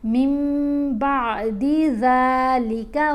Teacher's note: عنہم العذاب ولا هم ينظرون إلا الذين تابوا من بعد ذلك وأصلحوا، یہاں اقلاب کا اصول ہے، من نہیں پڑھا گیا، نون ساکن یا نون تنوین کے بعد حرف با آ جائے تو پھر نون کی آواز کو ہم نے میم کی آواز میں بدل کر پڑھنا ہے